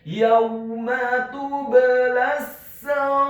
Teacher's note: di akhir ayat huruf ra-nya dibaca sukun dan dibaca tipis. Karena sebelum huruf ra yang sukun adalah huruf yang harokatnya adalah kasroh.